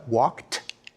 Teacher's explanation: Very few of us realize, for example, in English, that the past tense suffix ed is actually pronounced in 3 different ways. When we say he walked, we pronounce the ed like a t, walked. When we say jogged, we pronounce it as a d, jogged.